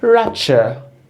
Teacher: The stress is at ra, okay, and the unstressed syllable is the second syllable